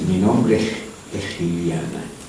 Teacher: la S se lateraliza también, se hace L, pero se hace L sorda